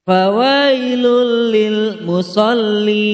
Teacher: Cara membaca lamnya adalah jelas. Mad arid li sukun, karena huruf mad jatuh sebelum huruf yang diwakafkan. Cara membacanya dipanjangkan 2-6 harokat.